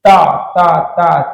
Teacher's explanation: दंत व्यंजन कहलाते हैं। इसमें जीभ की ऊपर की नोक द्वारा दांतों का स्पर्श होता है।